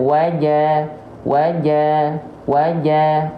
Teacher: bacaan ya jadi saya ingatkan Jim tidak boleh bocorbecek nafas karena Jim enggak punya sifat hams ya enggak punya sifat nafas tapi sifatnya adalah jahr tertahan nafasnya